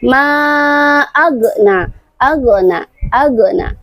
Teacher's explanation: tanpa kita sadari kita pantulkan huruf ghin. Padahal huruf ghin tidak memiliki sifat qalqalah.